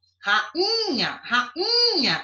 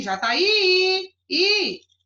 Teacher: apesar de ser tônico em relação às outras vogais da palavra rainha, ela não é uma tonicidade como a de Jataí